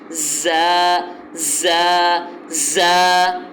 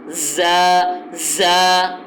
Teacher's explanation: تو زا کو جو ہے وہ بھرپور سیٹی سے نکالنا ہے. زا زا زا. آپ محسوس ہو رہا ہوگا آپ کو کہ میں کس طرح سیٹی سے اس کو ادا کر رہا ہوں، سختی سے ادا کر رہا ہوں.